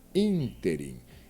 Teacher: É uma proparoxítona, porque a sílaba tônica é a antepenúltima da palavra.